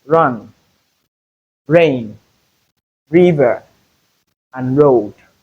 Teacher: the voiced alveolar roll or voiced alveolar rhotic